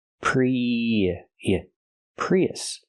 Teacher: We have two vowels. We have the e sound like green beans plus a short h sound like cup and up. When we link these two vowels, we hear y in the middle.